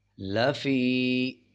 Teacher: یا کے اوپر جب جزم آ رہا ہو اس سے پہلے والے حروف کے نیچے زیر آ جائے تو 1 سیکنڈ کھینچ کے پڑھتے ہیں